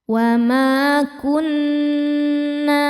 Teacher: karena ada alif sebelumnya fathah. Dibacanya panjang dua harakat. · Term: mad thobi zohiri